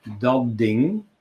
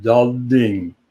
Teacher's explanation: Like, for instance, we learned that in standard Dutch, you say dat ding, which means that thing, okay? Dat ding, which means that the first word adapts to the second word. Dat ding becomes dat ding, voiced.